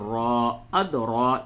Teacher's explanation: इस रा को पुर करके यानी मोटा करके पढ़ेंगे